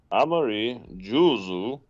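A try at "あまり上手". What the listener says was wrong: You've got Jews on the mind. Amari juzu janakute, amari jozu.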